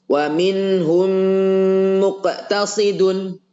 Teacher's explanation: mimnya dirubah menjadi huruf yang sama dengan setelahnya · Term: idgham